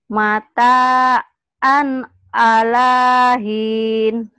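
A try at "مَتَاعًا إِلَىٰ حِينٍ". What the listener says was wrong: Bukan ala atau ila. Mata'an ilahin.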